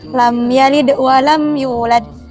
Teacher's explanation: mim sukun bertemu dengan ya, yang dimana ia punya hukum idhar syafawi. Jadi cukup dibaca jelas